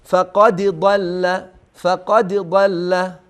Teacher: دال رو حتما چون که ساکن هست با قلقله ادا کنید. اینجا ادغام صورت نگیره بین دال و ضاد